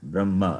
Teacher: There is no hakara sound when I say Brahma. Hakara sound not there.